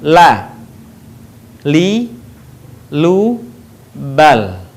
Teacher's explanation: menyentuhkan lidah terdekat dengan langit-langit bagian depan. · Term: huruf la